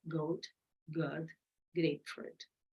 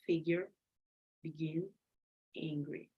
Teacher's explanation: it is easy to tell the sound is being made at the back of the throat